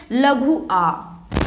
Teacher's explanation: लघु आ बोलेंगे तो देखना जीभ के बीच वाले हिस्से से इसका उच्चारण होता है। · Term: मध्य स्वर